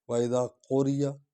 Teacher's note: قاف کو ہم نے حلق سے ادا کرنا ہے